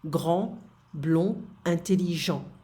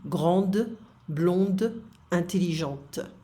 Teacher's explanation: Les finales S, D, T sont muettes au masculin, mais sonores au féminin à cause du E. So what they mean here, muette, is like we don't pronounce it. · So what they mean here, muette, is like we don't pronounce it. So the endings of the masculine, we don't pronounce them.